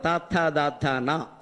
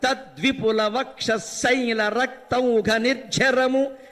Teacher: పళ్ళు బిగించినా కూడా పలికే అక్షరాలు కొన్ని ఉన్నాయి వాటిని దంత్యములు అంటారు